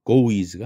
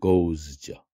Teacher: goes 할 때 es는 is 발음을 내지 않고 그냥 z 발음만 합니다